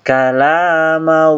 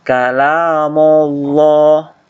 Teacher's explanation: Kemudian nanti masuk dibaca tebal, kalamallah. Ingat mimnya jangan dibaca tebal, jangan dibaca kalamullah.